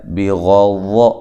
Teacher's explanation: بغض غین اور ضا کو دونوں کو موٹا پڑھنا ہے